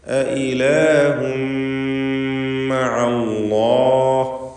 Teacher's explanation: 2 ഹംസകൾ തുടരെ വരികയാണ്. തൻവീനും ശേഷം മീമുമാണ്. പൂർണ്ണമായി മീമിലേക്ക് ലയിപ്പിച്ച് മണിക്കുക. ഇദ്ഗാം ബിഗുന്ന കാമിൽ.